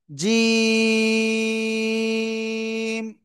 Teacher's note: জিহ্বার মধ্যখান, তার বরাবর উপরে তালুর সাথে লাগিয়ে উচ্চারণ করবেন, জিম। ঠিক আছে?